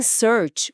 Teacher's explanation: Já em search, o ar desliza suave, como um sopro longo.